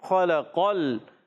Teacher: قاف کی زبر کو لام سے ملائیں گے، خلقل، لام کو ہلائیں گے نہیں